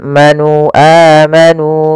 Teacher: pada lafal nu ada mad tabi'i yaitu dhammah bertemu waw, yang dimana di sini dipanjangkan 2 harakat. Untuk alif yang ditandai di sini di warna abu-abu, alifnya dianggap tidak dibaca.